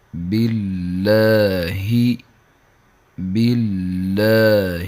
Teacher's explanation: با، با دونوں ہونٹوں کے تری والے حصے سے ادا ہوتا ہے۔